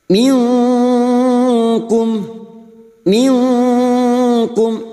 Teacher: Hakiki nun sukun atau tanwin yang bertemu dengan 15 huruf ini nun sukun atau tanwin dibaca samar dan mendengung selama dua atau tiga harakat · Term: Ikfa Hakiki